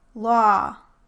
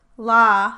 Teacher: you are most likely saying we the aw vowel in those words, and you should be able to hear the difference from the ah vowel